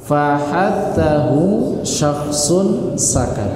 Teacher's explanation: Mau dia kasrah, mau dia sukun, mau dia domah fathah, ini tetap keluar nafas. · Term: hames